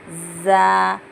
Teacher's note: यहाँ पर सा को भी मैं ज़बान बाहर निकाल के बोली, सा जीम हा ख हैवी है, इसको गोल मुँह करके बोलना, ख दा दाल ज़ाल, ज़ाल को ज़बान बाहर निकाल के बोलना, ज़ाल रॉ जा जब बोलते दो ऊपर के नीचे के दांतों को मिला के वाइब्रेशन होना